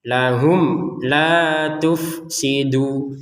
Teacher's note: mim sukun bertemu apa? Huruf lam. Maka di baca dengan jelas